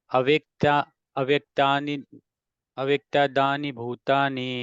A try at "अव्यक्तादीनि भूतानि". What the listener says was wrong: तानि नहीं, अव्यक्तादीनि, अव्यक्तादीनि।